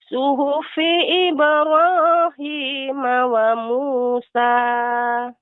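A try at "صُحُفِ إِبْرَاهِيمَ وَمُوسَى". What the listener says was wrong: Ya, ha lebih dilembutkan lagi Ibu pengucapannya. Suhufi ya, suhufi Ibra.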